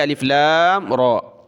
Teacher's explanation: را کو ایک الف کی لمٹ میں کھینچا کیونکہ کھڑا زبر ہے، مد نہیں ہے، ٹھیک ہے، الف لام را، الف لام میم را۔